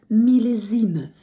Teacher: С між двома голосними читається як з